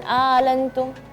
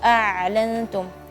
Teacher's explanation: Ini kan a dari bawah tenggorokan, ain tengah-tengah tenggorokan.